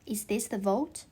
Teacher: The former needs the lower lip to be pressed against the upper teeth, and the latter with the upper lip and forms a firm contact that the airflow is completely blocked for a moment will be helpful.